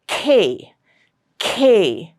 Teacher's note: That means when you pronounce these sounds again a burst of air will have to come out of your mouth. The air has to be released suddenly and with force. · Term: closive